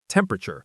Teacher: In casual American English, we often say it faster, almost squishing the syllables together